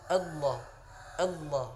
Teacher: Tidak boleh kita menyebutkannya Allah mengikuti bibir seperti monyong, karena nanti seperti ada waw yang disukunkan di situ. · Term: lafaz Allah yang tebal